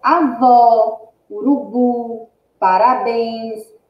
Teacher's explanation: Olha só: avó, urubu, parabéns, vó, bu e bens são as últimas sílabas das palavras. E dessas palavras, essas últimas sílabas são as mais fortes. Se é a última sílaba, então é uma palavra oxítona.